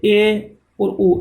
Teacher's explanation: इनका उच्चारण करते समय आधा मुंह बंद रहता है तो ये अर्ध समर्थ कहलाते हैं